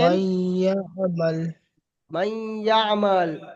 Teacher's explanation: তানবিন নুন সাকিনকে গুন্না করে পড়তে হবে। একে ঈদগামে বিল গুন্না বলে।